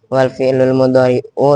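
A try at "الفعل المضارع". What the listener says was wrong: al fi'lul mudhari'u bukan wal, emang ada wawunya. Lu tadi bahasanya wal bukan? Kenapa al mudhari'u? Karena al mudhari' itu badal dari al fi'lu. Fi'il tapi yang dimaksud adalah fi'il mudhari'.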